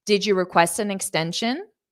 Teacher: this is a yes no questions so you're Rising intonation